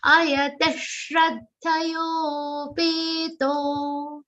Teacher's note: To is a long sound, so you have to drag it a little.